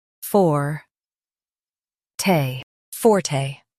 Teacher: Stress the for syllable and say te lightly.